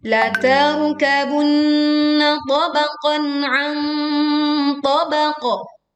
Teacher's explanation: menyamarkan bunyi nun sukun dan membentuk makhraj huruf do saat membaca nun sukun. Lalu kita berwaqaf di qaf sukun dengan suara yang tebal dan jelas, kuat pantulannya. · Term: bacaan dengung